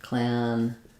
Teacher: So clandestine is stressed on the des syllable. We have the a vowel here.